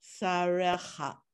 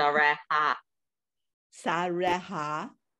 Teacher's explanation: It's not a ch sound. It's just a simple H. No ching. It's just a simple H.